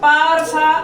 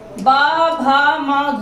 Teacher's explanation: प और फ अघोष हैं, ब, भ, म घोष हैं। ये भी स्पर्श व्यंजन है, यानी प्रयत्न में स्पर्श इनका होता है और क्रम वही है।